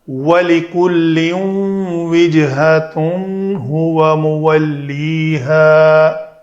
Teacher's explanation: وجہتن تنوین کے بعد ہا ہے تو اس تنوین کا اظہار کیا، اس تنوین کے بعد واو ہے تو اس کا ہم نے ادغام کیا